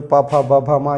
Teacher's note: ये दोनों ओठ को आपस में स्पर्श करने से उच्चारण होता है। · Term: ओष्ठ वर्ग